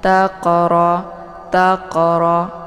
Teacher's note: Jadi cara bacanya qafnya dipantulkan dengan pantulan ringan.